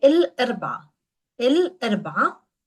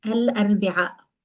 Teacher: We drop the glottal stop at the end